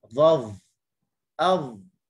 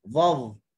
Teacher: huruf dha, hujung lidah di hujung gigi atas